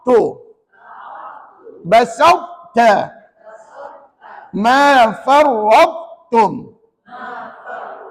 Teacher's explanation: Huruf ta dibaca tebal tetapi tidak melantuni tidak melantun